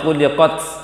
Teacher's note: Untuk ta itu jangan angin terlalu banyak.